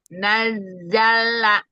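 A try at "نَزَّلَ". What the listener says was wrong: Sekali lagi lanya kurang lambat. Nazzala.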